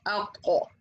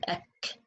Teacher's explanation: We said letter kaf is coming from the hard palate with the farthest part of the tongue, but letter qaf is coming from the soft palate with the farthest part of the tongue